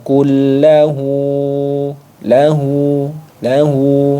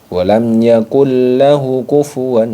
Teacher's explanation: Dah panjang jadi di sini ketika ada Dah panjang lahu maka dibaca panjang satu Alif dua satu ayunan atau dua harakat